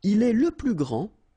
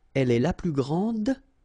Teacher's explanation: Okay, so phonetically, what you can hear is that this first form here for the masculine, grand, so you don't pronounce the final D, will be exactly the same as the plural form for the masculine, grand.